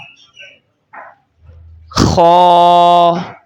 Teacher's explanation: خو کو آپ نے حلق کے اوپر والے حصے سے ادا کرنا ہے اور اس کو آپ نے موٹی آواز کے ساتھ پڑھنا ہے